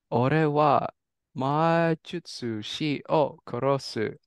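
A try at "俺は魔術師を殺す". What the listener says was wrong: Exactly. Nice.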